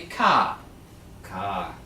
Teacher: R is not pronounced when it ends the word or is followed by either a constant or the letter e